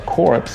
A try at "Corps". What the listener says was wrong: Did you say corpse? It's core. That's how you pronounce it.